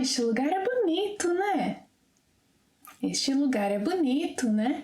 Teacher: não é is used at the end of a statement with a rising intonation when seeking for an agreement and often shortened to né.